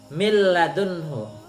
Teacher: nunnya hilang masuk ke huruf kedua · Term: idgham bila hunah